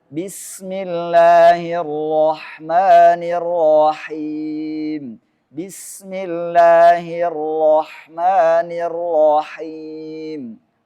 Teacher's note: getaran pada huruf ro boleh digetarkan sekali pada saat mengucapkannya